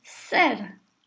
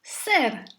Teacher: The whole syllable is high and short because the king of that syllable is really the letter sa.